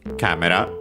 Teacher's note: Camera, as in photo a camera for photographs from English, accented just like in English on the first syllable